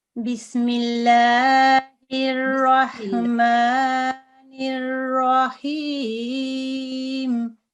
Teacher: ये बा हुर्फ़े तहक़ीक़ है, इसको बारीक पढ़ते हैं।